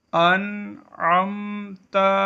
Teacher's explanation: اس کلمے میں نون ساکن کے بعد عین حروف حلقی ہے، یہاں اظہار ہوگا